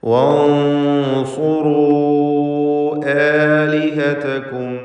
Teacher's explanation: മദ് മുൻഫസിൽ ജായിസാണ്. 4-5 ഹറക്കത്തിൻ്റെ അളവിൽ ദീർഘിപ്പിക്കണം.